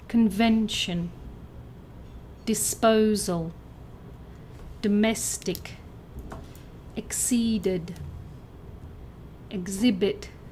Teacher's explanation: words that sound like banana with a stress on the second syllable